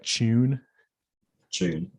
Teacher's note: in British English, sometimes you also get it so palatalized that it affricates